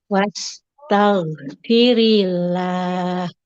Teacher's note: huruf gin itu huruf yang kalau sukun suaranya harus mengalir